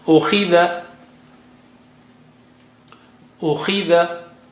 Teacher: Khi is high sounding, but Kasra is bringing it down